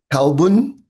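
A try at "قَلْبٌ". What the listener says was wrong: So the first one should be qaf. So not kalbun, but qalbun, qalbun. Try that again.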